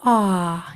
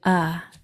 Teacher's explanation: excellent last one okay here we have a short o ah your jaw is really dropped a lot more than your schwa sound uh ah your jaw is dropped and that mouth is nice